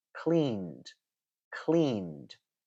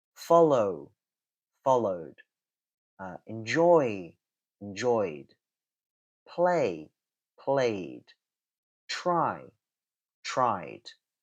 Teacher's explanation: it's ending either in a voiced consonant or a vowel sound. And in that case, you want to pronounce the ed ending as d, d, d. If you do that, you can feel the vibrations.